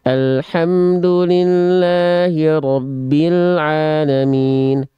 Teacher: Perhatikan di sana bunyi vokal A dan bunyi vokal O-nya tidak dibuka. Dia yang vokal A nggak jelas, dia masih condong keming-kemingkem saja.